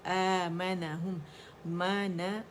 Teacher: مد بدل اگین کھینچ رہی ہے الف کی آواز کو، الف کبیرہ کو